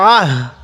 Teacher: আইনটা একটু চাপ দিয়ে পড়বো, হামজা পড়বো না।